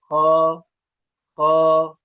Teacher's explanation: जबान की जड़ जहां पर खत्म होती है हलक का वो हिस्सा आखिर हलक कहलाता है वहां से ख अ ख नहीं करना है ख की आवाज मोटी होती है।